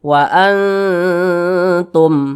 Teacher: Akan tetapi huruf ta di sini tergolong pada ikhfa hakiki aqrab. Nah, jadi cara membunyikannya itu disamarkan, didengungkan. Akan tetapi bunyinya itu lebih dominan berbunyi n, Jadi dibaca wa antum.